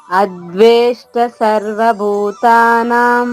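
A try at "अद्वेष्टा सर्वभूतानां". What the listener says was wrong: అమ్మ అద్వేష్ట దీర్ఘం ఉందమ్మా.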